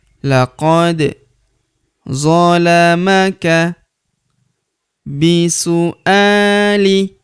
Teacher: huruf da berharakat sukun kita pantulkan atau kita qalqalahkan